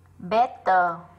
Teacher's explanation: Better là âm ơ ngắn. Bởi vì trọng âm nó rơi vào bét cho nên cái âm ơ này yếu này.